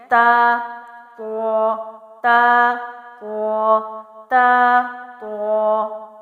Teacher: تا کے لیے زبان کی نوک کو اوپر کے سامنے والے دو دانتوں کی جڑ سے لگا کر، تا اور تو کے لیے زبان کی نوک جو ہے اوپر والے دانتوں کی جڑ سے ہی لگے گی، لیکن فرق کیا ہے، تا کے لیے زبان پیچھے سے موٹی نہیں ہوتی جبکہ تو کے لیے پیچھے سے زبان کو پر کیا جاتا ہے، موٹا کیا جاتا ہے۔